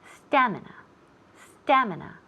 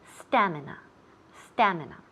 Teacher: The accent falls on the first syllable.